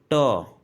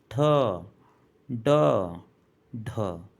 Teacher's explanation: जैसे ही आप ट बोलेंगे आपकी जीवा ऊपर की तरफ जाकर मुड़ जाएगी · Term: मुर्धा